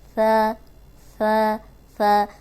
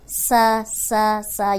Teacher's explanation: ثا جو ہے اس میں سیٹی کی آواز نہیں آئے۔ اوپر سامنے کے جو 2 دانت ہیں ان کے اندرونی کنارے پہ زبان رکھیں، ثا ثا ثا۔